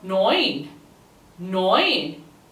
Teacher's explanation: It sounds very similar to nine, but because of the EU combination, it gives the oi sound. So therefore it becomes neun.